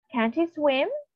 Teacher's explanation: in the first sentence, the vowel in the word can't is pronounced shorter. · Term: vowel length